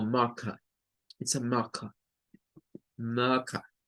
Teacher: aquí no pronuncian la R, solo pronuncian la schwa